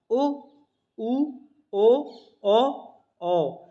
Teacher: आगे हमारा वृत्तमुखी, जिनके उच्चारण में होठ गोलाकार अथवा वृत्तमुखी होते हैं उन्हें हम वृत्तमुखी कहते हैं